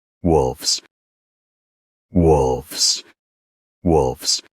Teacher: The singular ends with a soft f sound. In the plural form, that f changes to a voiced f sound before the plural ending.